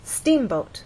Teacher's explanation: understand that the first syllable is stressed